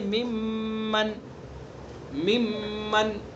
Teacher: نون کا میم میں ادغام کیا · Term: ادغام متقاربین